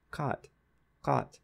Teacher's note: the aspirated K in English it would mean to polish but if I don't put aspiration on the K and I just say cut cut then it means to cut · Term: unaspirated cut phoneme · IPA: [kat]